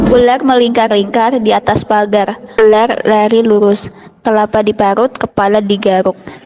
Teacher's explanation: Pengucapan R di akhir kata menjadi bergetar panjang dan berat, menyerupai fonem R dengan pasangan ganda atau bakal menyerempet ke fonem KH secara ringan.